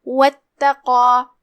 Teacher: कलिमत वत्तक़ा में यहाँ हमज़त वसल है, हमज़त वसल लिखा जाता है लेकिन उसे ज़ाहिर नहीं किया जाता